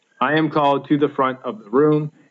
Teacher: the room it's hard to say that with a sounding anapestic unstressed unstressed stressed and one two three feet per line